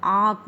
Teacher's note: इसका उच्चारण नाक और गले दोनों से होता है। इसका आँख का जो उच्चारण होता है, आँख का जो उच्चारण होता है नाक और गले दोनों से होता है। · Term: अनुनासिक स्वर